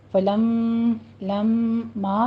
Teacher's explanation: فلما میں پہلے غنّے واجبہ کریں گے، اکمل غنّہ ہوگا یہاں پہ